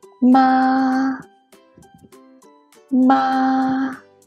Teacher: the first one is a high level tone